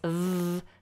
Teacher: The difference between F and V is nothing to do with position. The position's the same, but a V has more voice. So you actually use the voice.